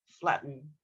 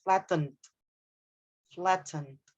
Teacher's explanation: if you are going with the American pronunciation, the T would be D, flatten. But if you are using the British pronunciation, then you need to say the T clearly